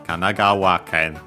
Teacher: the accent there on the wa